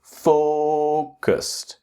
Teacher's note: with focused that the strong syllable is the first syllable